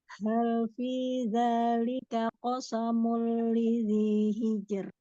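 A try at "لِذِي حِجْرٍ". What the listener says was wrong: Huruf H-nya disempurnakan lagi tenggorokan tengah. Hijr.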